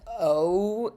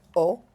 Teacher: the way that I say it is kind of two vowels for the price of one. It's like O and it vowel changes in the middle.